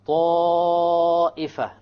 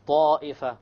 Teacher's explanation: we have the alif followed by a hamza, okay, in the same word. So then you have to make it long. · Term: connected mad